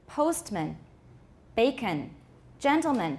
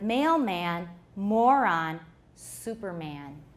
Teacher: there should be reduced vowels at the end of postman, bacon, gentleman, but not at the end of mailman, moron, superman